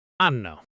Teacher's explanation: it's not even 3 words anymore, it's one mumbled sound.